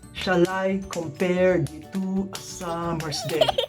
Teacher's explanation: Which gives us 10 syllables. 10 syllables of 5 stressed and 5 unstressed, making it 5 iambs, or what we call iambic pentameter.